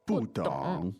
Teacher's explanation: Now, the tones there are Fourth and third.